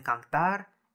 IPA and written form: kaŋtaɾ (cantar)